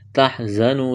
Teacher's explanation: زا میں سیٹی کی آواز پیدا کریں گے، واو مدہ ہے، ایک الف کے برابر کھینچنا ہے۔